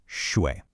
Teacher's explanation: your voice is making a Vshape. It dips down and then it has to rise back up.